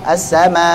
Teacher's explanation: Maka sebagian riwayat menghapus huruf hamzahnya menjadi as-sama. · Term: Hadzf